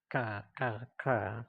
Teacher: the Arabic ka, ka, ka from the back of the throat